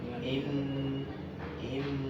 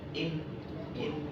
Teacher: ada huruf nun ada tajdidnya masuk dengan dengung